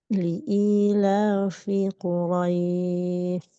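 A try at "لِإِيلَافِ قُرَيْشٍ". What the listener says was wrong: Tafasyinya masih belum jelas terdengar, Bu. Quraisy. Quraisy.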